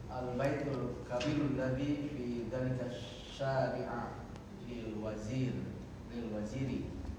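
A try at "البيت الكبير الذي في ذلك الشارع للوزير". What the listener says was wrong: Ah, itu salah harokat itu. Antum tadi bacanya fi dzalika antum bacanya syariah ya. Yang lain bacanya syari'u sesuai di situ harokat yang buku hijau ada harokat kecil itu. Itu syariah yang di buku syari'u. Syari'i, ya.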